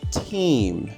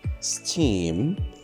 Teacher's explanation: The t sound can be pronounced as an aspirated t, like in the word team, or it can be pronounced as an unaspirated t, a normal t, like in the word steam